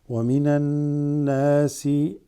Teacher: Alif lam drops, go straight to the noon. Huruf shamsiya.